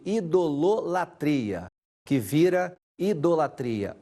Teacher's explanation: houve a queda da sílaba Lu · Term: síncope